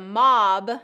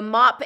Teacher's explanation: the mob that's the voiced one the mop is the voiceless one